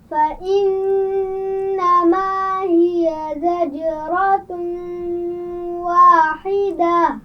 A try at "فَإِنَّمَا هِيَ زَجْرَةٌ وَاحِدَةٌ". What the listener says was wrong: زجرۃ، زا کے مخرج کا خیال رکھیے، اس کی آواز میں سیٹی ہوگی. زجرۃ واحدہ.